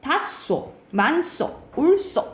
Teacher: 히읗 뒤에 시옷이 오면은 쌍시옷 소리가 나요.